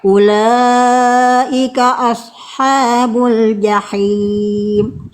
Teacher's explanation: Shad itu huruf tebal. Huruf tebal itu karakternya lidah dalam naik.